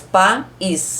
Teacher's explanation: na palavra país não tem semivogal, porque eu separo em 2 sílabas, país. Para ser semivogal, ela tem que estar na mesma sílaba com a vogal.